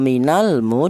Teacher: Bahwa di sini ada lam matinya itu dinamakan izhar yaitu dibaca jelas. Adapun namanya ini adalah izhar qamariah ya minalmu seperti itu.